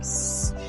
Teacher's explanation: When the cords are apart, we make voiceless sounds like s.